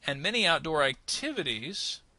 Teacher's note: we're going to rise on activities and then fall a little bit